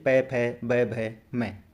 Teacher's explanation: पै वर्ग ओष्ठ यानी कि ओठ की सहायता से बोले जाते हैं।